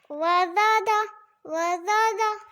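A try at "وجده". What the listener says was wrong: آپ یہاں دیکھ رہے ہیں انہوں نے پڑھا ہے وزدہ، لیکن یہاں پر کیا ہے؟ جیم ہے. وجہ. وجدہ.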